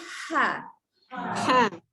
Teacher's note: Angin keluar dulu baru ada bunyi.